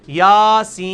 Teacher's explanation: سین کو آپ 5 سے 6 الف لے کے جائیں گے